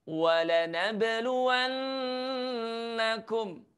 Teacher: pastikan ada huruf nun tasydid yang harus kita dengung.